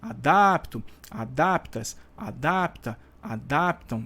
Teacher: a vogal tônica é o A, tá? O A da sílaba DAP está dentro do radical.